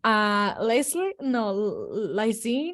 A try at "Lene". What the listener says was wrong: It's Lene. The S is silent.